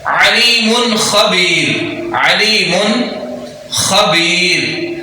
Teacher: نون ساکن کے بعد حروف حلقی جب بھی آئے گا تو نون ساکن اور نون تنوین کو ظاہر کر کے پڑھا جائے گا